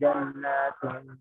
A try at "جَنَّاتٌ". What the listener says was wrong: جنات Jannatun itu kurang teh, kurang gunanya teh.